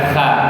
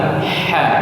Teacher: Huruf ha juga di tengah tenggorokan ya. Kemudian dia memiliki aliran nafas yang bersih ha. Seperti kalau kita baru minum ya.